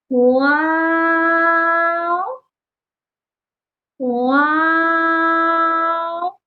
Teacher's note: کبھی بھی فا کی ادائیگی کی طرح اوپر والے دانتوں کو نچلے ہونٹ کے گیلے حصے سے ٹچ نہیں کرنا، بلکہ ہونٹوں کو گول کر کے پڑھنا ہے۔ واو، واو چھوٹا سا نہیں پڑھا جاتا، 5 الف کے برابر ہی لمبا کر کے ادا کیا جاتا ہے · واو کو پروناؤنس کرتے ہوئے ہونٹوں کو گول کر کے ادائیگی کی جاتی ہے۔ کبھی بھی فا کی ادائیگی کی طرح اوپر والے دانتوں کو نچلے ہونٹ کے گیلے حصے سے ٹچ نہیں کرنا، بلکہ ہونٹوں کو گول کر کے پڑھنا ہے۔